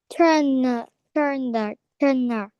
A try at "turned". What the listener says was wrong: Okay, add letter D sound at the end. Turned, turned, turned.